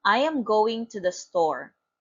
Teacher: falling intonation voice goes down